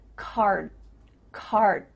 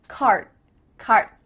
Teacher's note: My tongue is flat against the roof of my mouth to make the D, but it's not coming out.